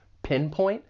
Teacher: the verb has two syllables. The stress is on that first syllable, pinpoint. And I'd also like to point out that final T.